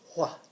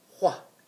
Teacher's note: we're going to learn this WH with a more of a breathy sound